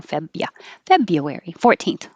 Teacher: We don't have to say the R there. Febia. February 14th.